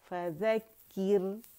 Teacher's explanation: यहाँ रॉ बारीक होगी क्योंकि रॉ साकिन से पहले हमारे पास कसरा आ रही है